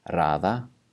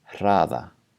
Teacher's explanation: One has a normal R and one has a voiceless R.